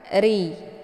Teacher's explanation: cara bacanya posisi pangkal lidah tidak terangkat RI kemudian dibaca panjang dua harakat karena ada Ya Sukun sebelumnya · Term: dibaca secara tipis